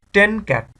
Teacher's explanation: এন এবং সি দুইটা মিক্স হয়ে বা ফিউজ হয়ে নেজাল এন হয়ে যাচ্ছে